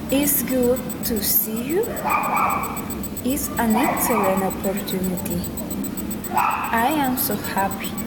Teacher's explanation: Exclamatory sentences, falling intonation.